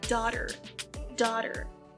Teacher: esse GH não é pronunciado e esse AU tem som de O